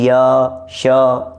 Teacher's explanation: य श ये तालु से बोले जा रहे हैं।